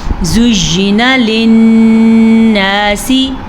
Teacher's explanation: لیکن ایک چیز کا خیال رکھیے گا، نون زبر الف نا، الف مدہ ہے اس لیے اسے بھی کھینچ کے پڑھیں گے